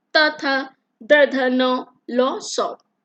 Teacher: इन सब वर्णों का उच्चारण जिह्वा का अग्रभाग दंतों को स्पर्श करके उच्चारित होता है